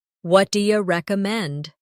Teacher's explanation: Notice how do you becomes dia in casual conversation.